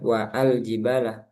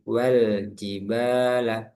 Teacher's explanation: lamnya langsung dibaca sukun. Jadi enggak ada a lagi. Jadi wal bukan wa al tapi wal jibala. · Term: hamzah wasal